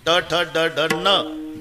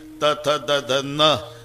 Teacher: ट ठ ड ढ न दाताशी संबंध नाही. त थ द ध न दाताशिवाय उच्चार नाही.